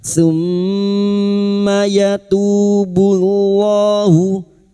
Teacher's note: mim yang bertasdid guna musyadadah kita dengungkan selama tiga harakat